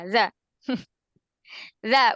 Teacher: ujung lidahnya menyentuh ujung gigi